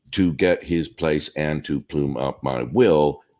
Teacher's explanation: the 5 strong syllables in this line are to get, place, plume, will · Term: 5 strong stresses